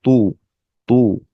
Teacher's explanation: তটা একটু যেহেতু মোটা হার্ফ অর্থাৎ জিব্বার পিছন সাইডটা একটু উঠে যাবে, তু, তু। বায়ের নিচে কাসর দেয়া বি, তু বি।